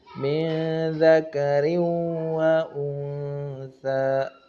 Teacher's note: tanwin in bertemu dengan wawu, maka idgham bigunnah kita berikan juga haknya